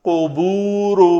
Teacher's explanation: اس قاف کا مخرج ہے جو لوتھڑا ہے وہ بالمقابل تالو کے ساتھ لگے، اندر گلے کے ساتھ لگے، تو یہ قوف ادا ہوتا ہے۔